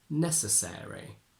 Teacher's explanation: this e in ARY almost gets like a second stress, and it's not just a short e, but it's a bit of a longer one, like a modern version of the diphthong air.